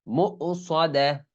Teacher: মিম ওয়াওয়ের উপর যে হামজা আছে এখানে ওয়াও ধরা যাবে না, এটা হামজা।